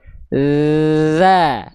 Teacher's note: ketika kita lafalkan huruf dzal, ujung lidahnya sentuhkan tipis-tipis, dan harus ngalir nafasnya ketika nempel.